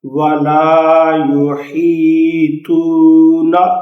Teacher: اور طا کا یہ خیال رکھنا ہے کہ طا حروف مستعلیہ ہے، یہ موٹا کر کے پڑھا جائے گا